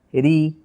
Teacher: আবার জের উচ্চারণের সময় জিহ্বার গোড়া নিচের দিকে নামিয়ে ফেলবো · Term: বারিক